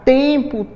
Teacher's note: esse N, ele sai com um som nasal, como se tivesse um acentozinho em cima do E. Então, ele tem 5 letras e 4 fonemas.